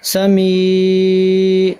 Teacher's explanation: ناک میں آواز، میم کی آواز کو ہم نہیں جانے دیں گے. سمی، اس میں نون غنہ ادا ہو رہا ہے لیکن غور کریں اب جو میں پڑھ رہا ہوں سمی.